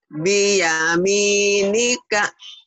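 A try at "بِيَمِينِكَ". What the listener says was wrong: Bagus. Selanjutnya.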